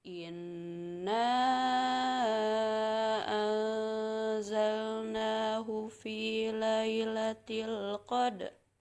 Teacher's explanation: pada kata inna ini harus dibaca panjang karena hukumnya mad jaiz munfasil · dibaca dengung karena hukumnya ikhfa